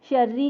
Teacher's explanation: शर्री के रॉ को हम बारीक पढ़ेंगे क्योंकि ज़ेर है।